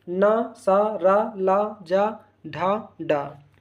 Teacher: उच्चारण के समय जीभ ऊपरी मसूड़े को स्पर्श करती है तो उसे हम दंत मूल व्यंजन कहते हैं।